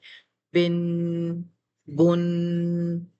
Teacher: غنہ ناک میں آواز چھپانے کا نام ہے۔ ناک میں آواز چھپانے کی وجہ سے آخر میں نون ساکن کا ساؤنڈ بنتا ہے اس غنے میں، جیسے ہم پڑھتے ہیں با دو زبر بن۔